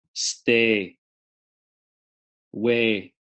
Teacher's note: that's part of what makes an Indian accent sound Indian is the diphthong a stays tight tight together a no-no glide so a the sound is a as in